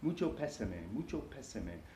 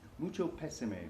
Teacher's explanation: with the accent on the first syllable of pésame